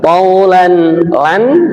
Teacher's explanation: ini tanwin ketemu hamzah, namanya idhar atau jelas